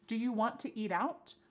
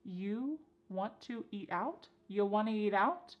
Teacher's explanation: we have reduced want to to become wanna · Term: reduction